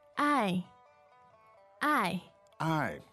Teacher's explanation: the verb to love is I I I fourth tone